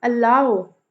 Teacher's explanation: अलाउ, लाउ पे stress